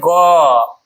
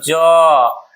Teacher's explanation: क्योंकि इसके उच्चारण में जो है स्वर तंत्री में कंपन होता है। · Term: घोष वर्ण